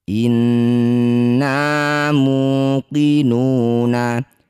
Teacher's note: Shalihan inna. Nun bertasydid disebut bacaan gunnah musyaddadah. Bunyi nunnya didengungkan 2 harokat.